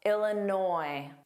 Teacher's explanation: But noi is the stress sound.